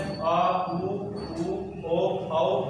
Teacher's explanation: पश्च भाग से बोले जाने वाले स्वर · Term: पश्च स्वर